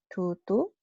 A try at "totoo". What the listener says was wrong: Totoo. Because we don't have that, we don't have digraphs, meaning two vowels pronounced as one. No. O. You have to pronounce every vowel. So it's o.